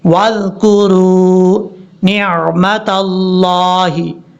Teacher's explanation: اب اس کے بعد ہے وَاذْكُرُوا، واو کو دال سے ملائیں گے، بیچ میں حمزہ کو چھوڑ دیں گے